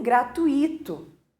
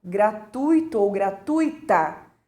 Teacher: Ou entrada gratuita, quando a correta pronúncia seria gratuito ou gratuita, né? Porque eu estou posicionando a sílaba tônica no tu e não no i